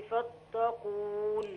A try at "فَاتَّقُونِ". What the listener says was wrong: فتا مش فطا.